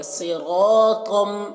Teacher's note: صاد کو پر پڑھیں گے، را کو پر پڑھیں گے، طا کو پر پڑھیں گے ، صراطم، میم مشدد غنہ کریں گے کیونکہ غنہ ہو رہا